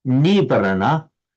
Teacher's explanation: the ni has become lengthened in Pali